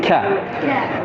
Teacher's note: bukan qa tapi ka, angin keluar.